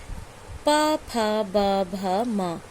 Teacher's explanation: और पा वर्ग में देखिए प, फ, ब, भ, म, इसका उच्चारण स्थान है ओठ